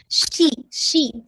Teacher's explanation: شی میں آپ کا جیسے کہا جاتا فشی ہے، زبان پھیلے گی، اور ساتھ میں ہمس پہ ہے